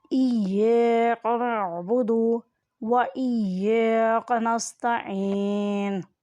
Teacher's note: عین حلق کے درمیان والے حصے سے ادا ہوتا ہے